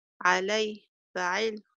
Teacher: فعل بالنبر على حركة اللام من الكلمة وحركة العين من الصيغة